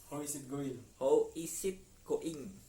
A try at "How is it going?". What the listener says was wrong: Coba agak cepat gitu ya. How is it going?